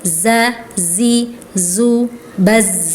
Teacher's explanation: Nah huruf zai ini ada desisnya ya Kak ya. ee makhrajnya ujung lidah dekat gigi seri yang bawah. Kemudian ada desisnya za jadi tebal za zi zu baz ya.